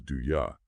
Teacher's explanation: Now this is a classic example of uh reduction in English. Many speakers maybe most speakers in casual conversation will reduce the ooh sound in u to a softer u sound.